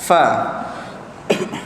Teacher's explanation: Kerana ditekankan, ada yang menahan untuk angin itu keluar, itu bahagian gigi dengan bibir. Maka angin itu akan keluar pada celah-celah gigi kita tu. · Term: huruf fa